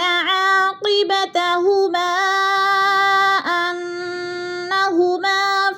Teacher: حروف مدہ کے بعد حمزہ دوسرے کلمے میں آ گیا ہے تو مد منفصل 4 الفی مد ہے، 4 الف کے برابر ہم نے اس کو کھینچ کر پڑھنا ہے